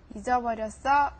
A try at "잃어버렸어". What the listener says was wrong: One is a J, and then one is like an L.